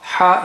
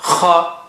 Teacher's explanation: ha is soft, kha, strong airflow